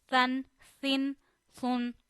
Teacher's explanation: but sa we read without whistle. Sa two zabar san.